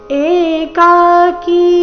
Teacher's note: ಏಕಾಕಿ ಮೂರೂನು ದೀರ್ಘ ಇದೆ